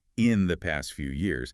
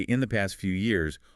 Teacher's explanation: They say in the past few years, almost like one long word, often with the little words like the and few kind of swallowed or unstressed. Right, they glide together.